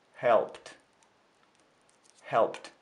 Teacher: Helped, опять p, глагол help заканчивается на p, значит, окончание прошедшего времени будет читаться как t